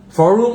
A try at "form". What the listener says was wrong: Form, FORM. Not forum, form. Form, FORUM. Thì mới gọi là forum. Nhưng mà cái này là form, FORM.